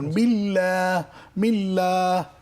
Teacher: আল্লাহ শব্দের ডানদিকে জের থাকলে আল্লাহ শব্দ চিকন হবে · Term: পাতলা